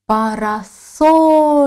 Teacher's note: Наголос падає на третій склад. Наголошений голосний О.